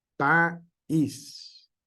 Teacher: hacemos esa pequeña pausa ahí porque es la pronunciación correcta y le damos el énfasis a la segunda vocal, que es una vocal débil. País. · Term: hiato acentual